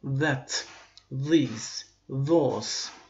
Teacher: Pəltək Z və yaxud da pəltək D səsini deyə bilərik ki, Amerikan variantında pəltək D səsini verir. Britaniya variantında pəltək Z səsini verir. · Konkret D hərfi deyil, amma D ilə Z-nın qarşı olaraq pəltək Z səsini verəcək.